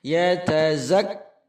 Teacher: Pada hentakan pertama ketika tasydid, hamas huruf kaf hilang. Tetapi setelah dilepas pada baris fathah, maka hamasnya keluar. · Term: kaf tasydid